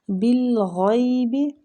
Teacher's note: با کو لام کے ساتھ ملائیں گے، کلکلا نہیں ہونا چاہیے